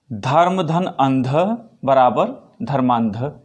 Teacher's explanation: यानी छोटा अ और छोटा अ, जिसे आप ह्रस्व अ कहेंगे, तो ह्रस्व अ के मिलने से दीर्घ अ बन गया, आ बन गया।